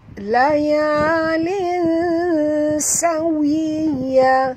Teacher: Tanwin bertemu dengan sin, kita kena sorokkan bunyi tanwin ini ke dalam huruf sin disertai dengan dengung, dua harakat, ya. Ikhfa hakiki.